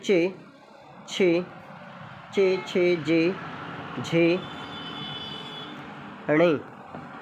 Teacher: इनका उच्चारण जो होता है तालु से होता है। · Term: चे वर्ग